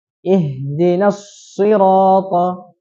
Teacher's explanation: Langsung masuk dari huruf nun ke shad. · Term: tasydid huruf shad